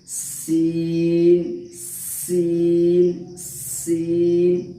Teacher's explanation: इसमें फ़र्क यही है कि सीन दोनों दांत को सटाने से, मतलब थोड़ा सा फोड़ रखना है जबान की नोक को, दोनों दांत जो है नोक के अंदर में आपको सटाना है। दोनों दांत के नोक में सटा करके थोड़ा दांत को फोड़ रखना है, तो वहाँ से छोटी सीन अदा होती है।